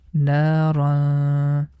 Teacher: tongue is not going to touch any part of the mouth and sound goes into the nose, and this sound we have to make it for 2 count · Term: Ikhfaa